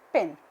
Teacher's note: For example, when I talk about sound P, it is termed as the 3-term label is voiceless bilabial plosive